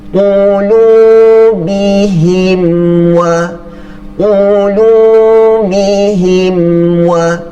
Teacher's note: mim di sini kita baca dengan ringan, tidak dengung. Kita baca dengan jelas sahaja.